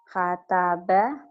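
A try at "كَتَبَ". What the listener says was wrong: Kataba. Bukan H tapi K ya.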